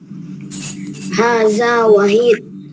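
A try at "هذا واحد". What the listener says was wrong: Hada wahid. Nah, wawunya yang panjang ya.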